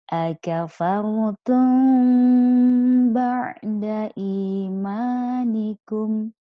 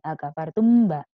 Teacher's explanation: Disamarkan ke hidung dulu, baru ke huruf ba, baru mingkem. Jangan langsung mingkem, akafartum mbak. · Cara bacanya didengungkan dulu baru mingkem. Kehidungan dihidungkan dulu, disamarkan dulu huruf mimnya ya. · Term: ikhfa syafawi